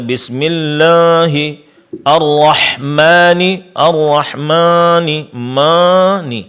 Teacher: Pengucapan mad alif disertai dengan ada suara yang keluar dari hidung, dan ini adalah kesalahan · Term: sautil gunnah